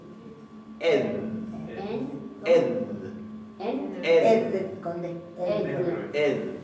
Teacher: Ed, una D fricativa suave.